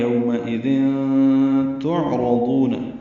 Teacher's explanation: یومئذ، یوم وولین ہے، ہونٹوں کو نا تمام گول کریں گے، آگے کی طرف لائیں گے ، میم کی زبر کو جلدی ادا کریں گے، حمزہ یا